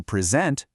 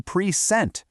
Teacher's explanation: If it's a verb, the spotlight moves over to the second syllable. It's an incredibly powerful and consistent pattern in English.